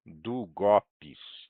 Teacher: o go é que é a sílaba tônica